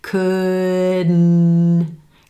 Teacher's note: The tongue stays in the same place and the air shifts to the nose for the N consonant.